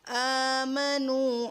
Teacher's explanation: الا الذین، للذین آمنوا، آمنوا، آ کی آواز اس لیے اوپر جاری کیونکہ حمزہ کے اوپر کھڑی زبر ہے اور وہ کو ادا کرتے وقت لپس گول کریں گے اور یہاں ایک الف کی مقدار پر کھینچیں گے کیونکہ یہ وہ مدہ ہے